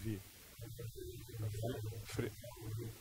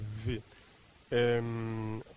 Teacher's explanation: La V pronunciada bilabialmente, vi. Fricativamente así, vi.